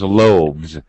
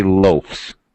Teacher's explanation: V okay however that does not change the pronunciation rule because with a v as we know it's a voice sound and it has Z pronunciation